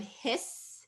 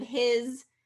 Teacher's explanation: The voicing that you're doing through the rest of the word is carrying into that ending.